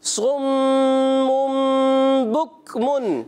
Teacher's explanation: پہلا غنہ ہوگا میم مشدد، دوسرا غنہ ہوگا اقلاب کا